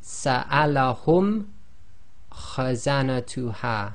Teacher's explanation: this meme sakin is pronounced clearly without a ghunna. Its length is 1 long. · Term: pronouncing clearly